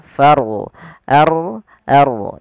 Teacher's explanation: Maka rnya dibaca dengan ro tafkhim yaitu kita harus menebalkan suara rnya tafkhim. Eh jangan dibaca farhabun tapi dia far ard ard.